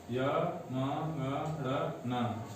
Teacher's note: यह पंचम वर्ण है, इनका उच्चारण नासिका से होता है